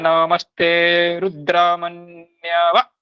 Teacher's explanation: आपने बोला है रुद्र, यहाँ पे दीर्घ हो जाएगा। आपको ह्रस्व बोलना है।